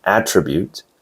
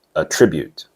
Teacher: The stress is on the first syllable for the noun, attribute, and on the second syllable for the verb, attribute.